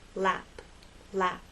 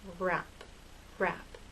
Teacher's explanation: But with R, your lips are more rounded and a little more tense.